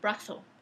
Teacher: Esa es una característica del dialecto de los españoles, decir brazo con el sonido interdental.